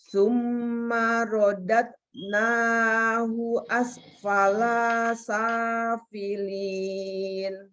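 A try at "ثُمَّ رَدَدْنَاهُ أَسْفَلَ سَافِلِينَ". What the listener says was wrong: Kolanya kurang mantul. Summa rodadnahu asfala safilin. Laknya pendekin. Hu-nya pendekin. Summa rodadnahu asfala safilin.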